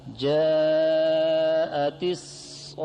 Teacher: تا کو وقف میں ہا سے تبدیل کریں گے وقف بالابدال. جاءت الصاخة اب مدوں کے بیان میں پڑھ لیا کہ جاء میں مد متصل ہے، اس کی مقدار 4 الف ہے توسط، اور صاخہ میں مد لازم کلمہ مثقل ہے، اس کی مقدار طول ہے، اس میں 6 الف کے برابر ہوگی.